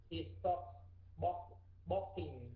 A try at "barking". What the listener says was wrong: Không phải barking, mà là barking. Barking, há miệng. Cái hai môi bẩm nhẹ nhẹ thôi, đừng bẩm chặt quá. Barking, đọc nhẹ nhàng thôi, barking.